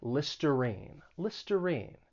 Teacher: that r-i-n-e it's not pronounced rhine it's pronounced with that long e